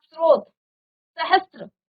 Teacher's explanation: अब इस वाली सौ के साथ यानी कि दंत्य सौ के साथ जब आप रॉ मिलाएंगे तो आधा सौ और त्र का उच्चारण आएगा